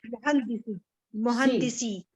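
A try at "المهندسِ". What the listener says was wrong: आपने पेश पढ़ा था ना, ठीक है। ये मुरकबे इजाफी है ना, इसमें यहाँ पे पेश नहीं आ सकता, जेर आएगी।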